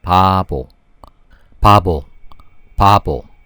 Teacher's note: Although it's the same consonant, it sounds a little different. The first biup sounds more like a P, pa, and the second consonant sounds more like a B sound.